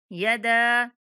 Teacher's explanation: दाल को 3 सेकंड तक लंबा करेंगे छोटी मद होने की वजह से। यदा अभी, बा के बाद या मद्दा होने की वजह से बा को 1 सेकंड तक लंबा करना है।